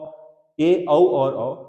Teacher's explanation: अर्धविवृत स्वर ए ओ औ, ए औ और औ, आधा मुंह खुलता है।